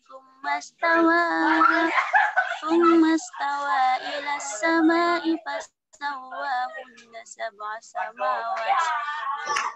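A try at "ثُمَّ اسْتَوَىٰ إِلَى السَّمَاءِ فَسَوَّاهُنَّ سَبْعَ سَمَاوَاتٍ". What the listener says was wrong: Digunah-gunahnya. Ditahan ya. istawa ila as-sama'i fasawwahun. Perhatikan gunanya.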